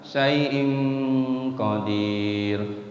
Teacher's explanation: Ada tanwin, ketemu qaf, dibacanya dengung sedikit, disamarin, namanya ikhfa.